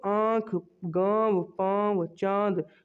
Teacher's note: जो आवाज़ है वो मुंह से भी और थोड़ी नाक से भी आती है अगर आप नाक बंद करके इनको बोलोगे तो यह सही से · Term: अनुनासिक